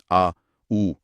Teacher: इन सब के उच्चारण में जीभ का पिछला हिस्सा ऊपर उठता है। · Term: पश्च स्वर